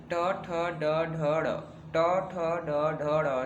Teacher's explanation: मूर्धन्य मतलब कठोर तालु के अगले भाग से, मतलब दांत और कठोर तालु के जो बीच से है, बीच का जो भाग है जीभ का, और उसके बीच में जो संघर्ष होता है तब ये ध्वनियाँ निकलती हैं, ये व्यंजन जो है निकलती हैं।